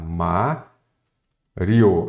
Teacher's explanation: então a sílaba tônica é a penúltima Então ela é uma paroxítona terminada em ditongo se você separarem · Primeiro, as paroxítonas terminadas em ditongo oral. Ditongo, as duas vogais permanecem na mesma sílaba.